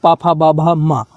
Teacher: प वर्ग जो कि ओष्ठ वर्ग होता है। ओष्ठ से इसका उच्चारण होता है।